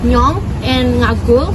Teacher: Banyumasan use a nasalized voice, which is like nyong and ngagul, which sounds more nasal.